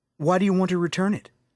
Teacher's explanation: listen to the way the two t sounds merge to make one slightly longer sound